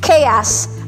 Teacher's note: Ang second syllable po, according to the dictionary, is more on the A sound.